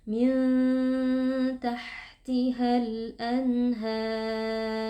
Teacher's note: en harakat kita baca panjang 4 harakat Min tahtihal Anhar kemudian pastikan huruf rnya itu dibaca dengan mengangkat pangkal lidah atau tebal · pastikan huruf ra-nya itu dibaca dengan mengangkat pangkal lidah atau tebal karena sebelumnya adalah alif dan sebelum alif merupakan harakat fathah.